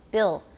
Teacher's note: the back of the tongue domes and becomes tense. It gets closer to the velum. Bill. And usually there is no alveolar contact.